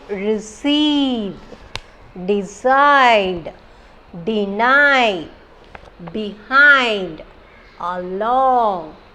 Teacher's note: So these words we are giving stress in the second syllable.